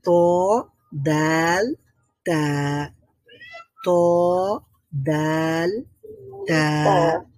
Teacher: তার মানে আমরা বুঝতে পেরে গেছি যে জিহ্বার অগ্রভাগ এটা সামনের উপরের দাঁতের গোড়ার সঙ্গে লাগছে বা উপরের দাঁতের মাড়ির সঙ্গে লাগছে